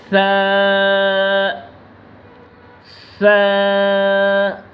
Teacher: زبان کا سرا اور سامنے والے اوپر کے دو دانتوں ثنایا علیہ کے اندرونی کنارے سے ادا ہوگا۔